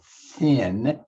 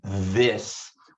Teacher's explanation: the th sound in thin which is a voiceless sound and the th sound in this which is a voiced sound both of them are produced by touching the tip of your